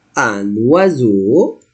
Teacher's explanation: I must pronounce the N because I have vowel